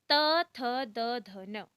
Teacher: तवर्ग का उच्चारण स्थान दंत या दांत होता है